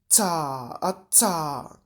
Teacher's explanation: powstanie bezdźwięczny dziąsłowy afrykat